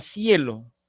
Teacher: En ese sentido, será diptongo ascendente o presentará diptongo ascendente la palabra cielo, vocal cerrada primero y luego vocal abierta.